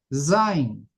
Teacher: a la hora de pronunciar emite un ligero silvido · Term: letra cibilante